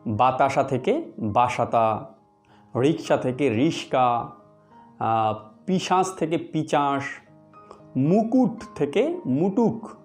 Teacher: শব্দের মধ্যেকার ধ্বনিগুলি পারস্পরিক স্থান পরিবর্তন করে উচ্চারিত হয়েছে, আর এটাই হলো ধ্বনি বিপর্যয়।